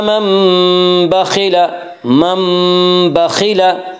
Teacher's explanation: खा को पुर पढ़ेंगे, खा हरूफ मुस्तालिया में से है। हरूफ मुस्तालिया साथ हैं जिनका मजमूआ खुस्सा ज़ौक़ क़िज़ है, जो हमेशा हर हाल में पुर पढ़े जाते हैं।